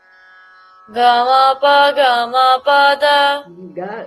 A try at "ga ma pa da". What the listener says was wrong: Ga should be low. Ga ma pa. It will come from ma pada ni sa sa ni da ni da ba ma.